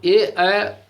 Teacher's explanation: ए, ऐ का उच्चारण स्थान कंठ और तालु से मिलकर के होता है।